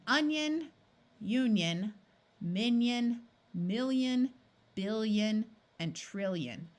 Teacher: Notice that in these words, there's no clear sound from the I. Instead, the N or the L in front of it changes the I to sound more like a Y